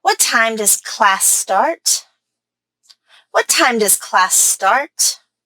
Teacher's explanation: my stress was on time class and start